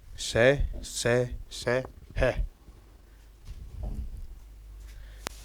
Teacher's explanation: श जो यह प्रथम से प्रथम वाला इसे बोलते हैं ताल्लव्य से। मतलब जब इसका हम उच्चारण करते हैं तो यह ताल्लव से अधिक बोला जाता है